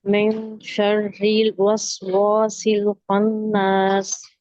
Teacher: اس میں نون کو چھپانا ہے کیونکہ اس کے آگے حروف ہلکی نہیں ہے، تو را بریک پڑیں گے، اس کے نیچے زیر ہے، اور با جو ہے اس کو گول کریں گے بالکل ڈونٹ کی شیپ میں، اور الف مدہ ہو رہا ہے اس میں بھی، تو اس کو بھی ٹو کاؤنٹ سیٹ پڑیں گے.